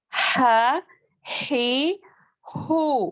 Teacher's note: وسط الحلق یعنی حلق کا درمیانی حصے یعنی کہ درمیانی والا حصہ، اس سے عین اور ہا ادا ہوتے ہیں